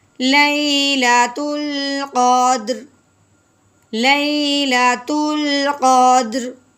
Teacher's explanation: دال کو ہلائیں گے، رو کو ساکن کریں گے